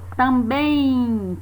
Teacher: Também, pode parecer estranho, mas aí também temos o encontro vocálico. Porque quando nós dizemos a palavra também, no final da palavra esse M soa como se fosse um I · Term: Izinho oculto